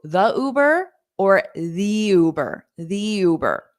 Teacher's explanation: because Uber is a vowel sound, you can pronounce the long E in the word the. So the Uber or the Uber, the Uber.